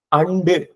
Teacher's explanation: நாக்கோட நுனி வளைந்து இடை அண்ணத்தை வருடும் போது பிறக்கும்